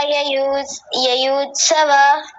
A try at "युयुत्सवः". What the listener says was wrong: युयुत्सवः, ह पीछे ये विसर्ग भी बोलना है, बोलिए। ययुत नहीं, युयुत। दो देखिए, य पर भी उ की मात्रा है और अगले य पर भी, युयुत्सवः, युयुत्सवः, ऐसा बोलिए।